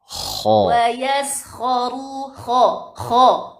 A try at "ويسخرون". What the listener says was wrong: Enggak. kalau kho itu pangkal lidah. Tapi lebih dalam lagi. Lebih ke dalam lagi. Kho. Akho. Kan namanya tenggorokan itu jangan sampai mengenai pangkal lidah. gini, itu pangkal lidah ya. Bukan tenggorokan itu loh.